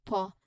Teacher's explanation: It starts with a very short shaft short and soft paw sound the first syllable right. So your lips come together briefly and you release a little puff of air with a short soft uh sound vowel sound in after.